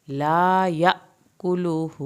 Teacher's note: لا پورا پڑھنا ہے، یا پہ جھٹکا لگے گا